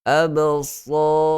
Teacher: Kena sertakan sekali sifat itbaq yang tebal.